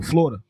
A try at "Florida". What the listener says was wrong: It's actually three Florida. Syllables. It's Florida.